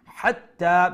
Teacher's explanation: pronounce the ha from the middle throat because it is the middle throat ha